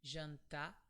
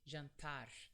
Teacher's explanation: the final sound is very soft from your throat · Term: H sound